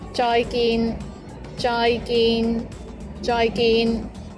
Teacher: both of the syllables joy and gain are both mid flat tones